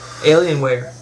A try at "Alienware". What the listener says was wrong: You said Alienware, like you broke the words up. Usually we just say Alienware.